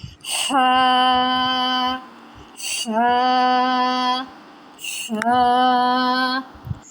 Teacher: Ha comes like we take breath. Originate from the center of the throat.